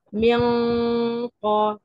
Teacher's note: في المنطقة الرخوة في الحنك الأعلى، يبقى أقصى اللسان مع ما يحاذي في المنطقة الرخوة من الحنك الأعلى ده مخرج القاف. أنا برفع اللسان وبقفل القاف وبعمل الغنة